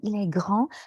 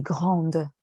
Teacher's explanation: And there's the R sound and then the on, which is a nasal sound.